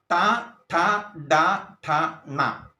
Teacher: മൂർധാവിൽ വരുന്നത് മൂർധന്യം എന്ന് പറയുന്നു